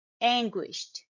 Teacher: the sound is not ending with D sound it's ending with t sound